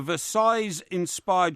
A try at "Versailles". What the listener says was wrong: The S is silent.